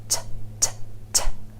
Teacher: It's made by taking your tongue tip and tapping it on the ridge behind your top front teeth. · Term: true T